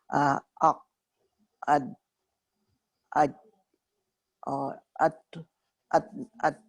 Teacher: ان حروف کو ادا کرتے وقت آواز ان کے مخرج میں ایسی سختی کے ساتھ ٹھہرتی ہے کہ آواز بند ہو جاتی ہے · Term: شدیدہ